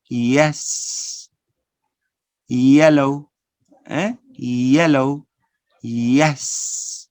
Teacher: so we have this palatal approximant sound